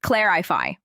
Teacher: Stress is on the first syllable.